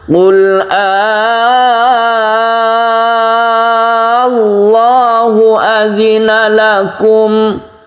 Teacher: Cara membacanya adalah dengan memanjangkannya terlebih dahulu hingga tiga alif atau enam harakat, kemudian dilanjutkan dengan tashid pada lafaz Allah. · Allahu dibaca Allahu, tapi karena untuk membedakan pertanyaan, maka ini dibaca panjang sebagai mat. Cara membacanya yaitu dipanjangkan dahulu sampai 3 alif atau 6 harokat, baru kemudian ditasydidkan ke lafaz Allah. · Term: mad farq, mad faraq